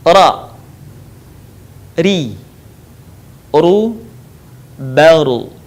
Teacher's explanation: Mengucapkan huruf ra dikeluarkan dengan cara menyentuhkan lidah yang terdepan atau disebut dengan adna lisan, dengan langit-langit bagian depan